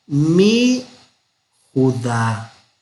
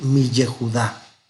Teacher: Cuando encontremos mi ye, como mi Yehudá, como mi Jerusalén, no vamos a decir mi ye, sino que simplemente vamos a suprimir el sheba de aquí y vamos a decir mi Judá, en lugar de decir mi Yehudá